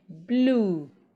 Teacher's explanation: And finally, we did mention that when we have letter EW coming after L or R, we do not pronounce the sound ye. Similarly, when we have letter UE after letter L, as in BLUE, we do not pronounce ye